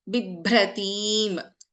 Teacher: First letter is an Alpaprana Bha and second letter is a Mahaprana Bha.